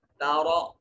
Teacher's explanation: تارا، را متحرک ہے، مفتوح ہے، را کو مفخم پڑھا جائے گا